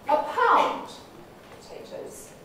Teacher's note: The nucleus has moved away from the end and is now sort of in the middle of my phrase. Well, actually, it's near the beginning of my phrase in this particular example. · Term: early or narrow focus